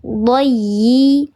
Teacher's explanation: Dayyi, ada huruf ya yang bertasydid. Ketika ada huruf ya atau huruf wawu yang bertasydid, cara bacanya ditekan, namanya nabrah.